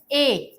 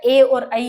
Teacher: कंठ तालु वर्ण होता है ए